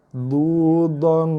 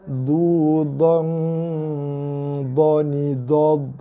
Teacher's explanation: Du dhan. Dengung ikhfanya tebal, buncit dan gemuk lah, meninggi sebab sesuai dengan sifat dha, dan bunyi mesti dalam rongga hidung, bunyi dengungnya du dhan dhani dad.